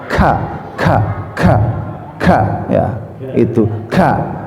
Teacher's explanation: Nah di sini yang maksud tujuan kaitan dengan kaf itu adalah masuk ke sifatul huruf al-hams ya, artinya hamas itu udah ada desis amar, ada keluar napas, maka ka ini ya belajar untuk dikeluarkan napasnya